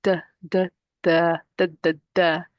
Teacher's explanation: Dal comes from the tip of the tongue. The tip of the tongue we put at the meeting point of the gum line and the top two incizes.